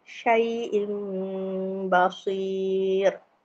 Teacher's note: iqlab maksudnya kita ganti dengan bunyi macam mim